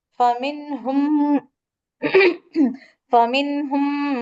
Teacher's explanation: மீம் சுக்குனை தொடர்ந்து மீம் வர்றதுனால அந்த மீம் சுக்குனை கட் பண்ணிட்டு இணைச்சு ஓதுறோம் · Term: இணைத்தல்